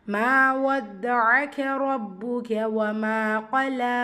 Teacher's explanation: மா மீம்ல அலிஃப் மதா 2 ஹரக்கத்தளவு நீட்டம் கொடுத்து ஓதணும்